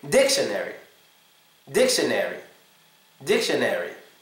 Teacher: Well, in this one, two vowels come together to make a schwa sound. The I and the O come together to make a schwa sound.